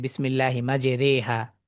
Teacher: সেটা ওই যে যেমন আমরা নৌকায় ওঠার দোয়া পড়ি বিসমিল্লাহি মাজে রে হা, তো এই জায়গাটায় সারা কোরআনুল কারীমে র কাসর রি, এই জায়গায় আসলে রে হয়ে যায়। এই যে রে সাউন্ডটা, এটা মূলত ইমালা সাউন্ড